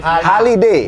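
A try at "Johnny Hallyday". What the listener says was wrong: Bukan Ho, Ha. Terus kalau orang Prancis bilangnya nggak gitu. Johnny Holiday. Ha nggak dibaca. Nggak dibaca. Ha tuh nggak dibaca sama orang Prancis. Johnny Holiday.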